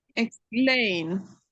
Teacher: The e should sound a because we are not stressing it. If we are not stressing the e, it should sound a the way we say letter a.